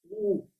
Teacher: Então, primeiro eu vou dizer as vogais mais posteriores, começando pelas arredondadas, porque os lábios ficam na posição arredondada